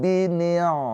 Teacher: Maka ha dhamir ini hukumnya adalah mad silah thwilah. Mad silah thwilah dibaca panjang empat atau lima harakat.